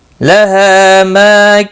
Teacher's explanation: لَهَا ہا ما دونوں الف مدہ ہیں، ایک ایک الف کے برابر کھینچ کر پڑھیں گے